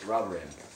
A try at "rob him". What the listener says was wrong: Robber him? Did you just say robber him? It just sounded like you say robbery. Robbery him, not rob him.